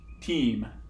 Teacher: the T should leave a mark at the alveolar ridge. And if I've gotten this mixture right, then it should be a complete closure.